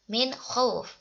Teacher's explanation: Nah, min khauf di sini ada hukum bacaan idhar. Nun mati bertemu dengan kha. Itu dibaca dengan jelas.